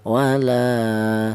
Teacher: La dibaca panjangnya yaitu 1 alif. 1 alif itu sama dengan 2 harokat, 2 harokat itu sama dengan 2 ketukan. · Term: mautobi'i